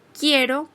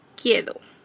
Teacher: el sonido R se reemplaza por el sonido D, en cuyo caso se sustituye la palabra quiero por quedo